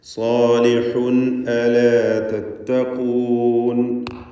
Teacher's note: സാലിഹുൻ, ഹ വ്യക്തമായി അതിൻ്റെ മഖ്റജിൽ നിന്ന് അഥവാ തൊണ്ടയുടെ മധ്യത്തിൽ നിന്ന് ഉച്ചരിക്കുക. തൻവീൻ വന്നിരിക്കുന്നു, അതിനുശേഷം ഹംസയാണ്. ഇൽഹാർ ഹൽക്കി നൽകി തൻവീനിനെ മണിക്കാതെ വെളിവാക്കണം.